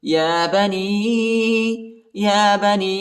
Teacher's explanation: یا بنی نون جو ہے نون یا ساکنہ ہے اور یا کے اوپر جو ہے چوٹا مد آیا ہے، اس کو تقریباً 2-3 سیکنڈ تک کھینچنا ہے